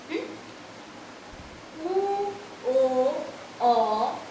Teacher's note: উ ও অ পেছন দিক থেকে উচ্চারিত হয়, তাই এরা তিনজন পশ্চাৎ স্বরধ্বনি